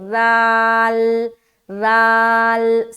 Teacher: ज़ा में सीटी वाली आवाज़ भी ज़ाहिर हो रही, जबकि ज़ाल में नहीं होना चाहिए, तो ज़ाल को हम निकालेंगे, ठीक है।